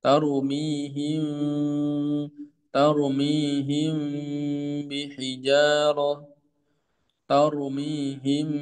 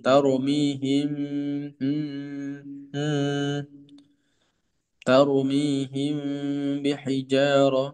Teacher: mimnya ada gunanya maka tetap terdengar suara gunanya dari rongga khaisyum